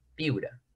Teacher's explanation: La tonicidad lo tiene la penúltima sílaba. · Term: palabra grave